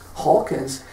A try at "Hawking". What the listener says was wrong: Hawking, I-N-G. When you said Hawkins, When you said Hawkins, I was thinking of another guy, but it's Hawking.